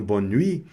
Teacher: aqui a consoante T não foi pronunciada. Não é pronunciada.